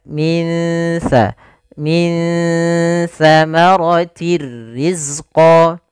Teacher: Nah, kemudian di sini pada lafal min sa ada bacaan ikhfa, yaitu ditandai dengan nun sukun bertemu dengan huruf sa. Itu cara membacanya, samarkan nunnya kepada makhraj daripada huruf sa. Makhraj sa adalah ujung lidah menempel dengan gigi sari kita.